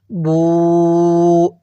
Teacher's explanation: টান দিবেন এরপরে বা ওয়াও পেশ বু এখানেও এক আলিফ টান পেশের পরে ওয়াও সাকিন থাকলে এক আলিফ টানতে হবে